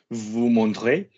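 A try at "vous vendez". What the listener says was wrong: No, vous. You've just done a spoonerism. You've swapped the consonants round. Vous vend.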